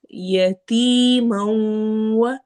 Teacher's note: ہم نے میم والی تنوین کو واو سے ملانا ہے